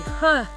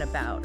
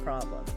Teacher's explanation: It's that lazy huh sound you hear in unstressed syllables, like the a in about or the o in problem. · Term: schwa